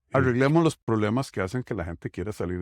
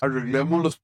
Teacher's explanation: notice how there really isn't much trilling or vibration